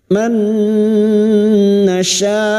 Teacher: nun sukun bertemu nun idgham bi gunnah, masuk dengan mendengung, masuk pada huruf nun dan mendengung selama 3 harokat.